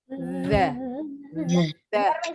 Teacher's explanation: Suara kita kalau dipegang bergetar. The. Ada ya getarannya? Bergetar. Kalau nggak ada getarannya berarti masih salah.